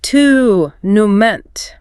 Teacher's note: In British English, it is often pronounced with a clear ooh sound, tournament, while Americans often flatten it entirely to sound like tournament.